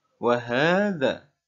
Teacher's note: huruf H yang berharokat fathah berdiri, yang artinya juga mad asli. Dibaca panjang 2 harokat.